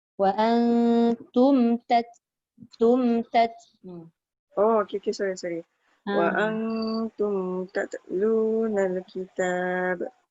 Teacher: Tum ada tanda mati pada mim jadi dia tak boleh dengung.